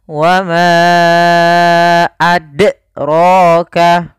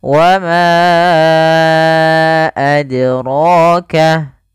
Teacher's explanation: Nah, ini menambahkan hamzah. Harusnya mengalir saja. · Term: qalqalah